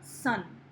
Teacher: हम अपने teeth को पहले स sound बोलने के लिए we combine, the tongue is right behind the teeth and then the n sound from the nose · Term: fricative sound